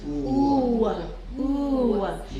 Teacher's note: You have ooh in Spanish, but ooh in English is ooh with a w on the end.